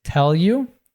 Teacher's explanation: YOU reduces and links to Tell.